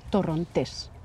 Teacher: You emphasize, you put the stress on the last syllable, Torrontes.